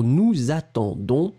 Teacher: don't forget to make the liaison between the two. Nous and attendons